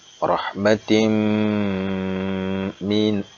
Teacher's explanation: Dia tidak boleh dibaca rahmatin mina, tapi harus didengung. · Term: idgham bi gunnah